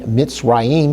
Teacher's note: the shiva that makes a very quick and short e sound, and that shiva is got two dots, one on top of each other.